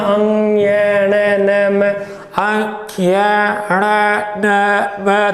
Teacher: नाक और मुंह है, दोनों का सहयोग लिया जाता है। जब हम बोलते हैं अंग ये न न म, अंग ये ण न म, तो हम देख रहे हैं कि नाक पर भी जोर ज्यादा पड़ रहा है, नाक पर जोर ज्यादा पड़ रहा है, इसीलिए ये अनुनासिक व्यंजन कहलाते हैं।